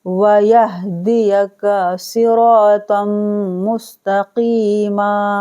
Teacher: صاد، را، تو، قاف، ان کو چاروں کو پور پڑھنا ہے یعنی موٹا پڑھنا ہے